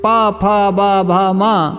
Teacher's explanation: ये सभी ओष्ठ वर्ण हैं, इनका उच्चारण स्थान ओष्ठ है